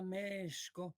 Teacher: Mexco, y que hubo una epéntesis como la primera vocal, la primera sílaba mesh, era una sílaba larga, meshko, y que digamos, la fricativa sh era bastante silbante